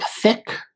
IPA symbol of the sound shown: θ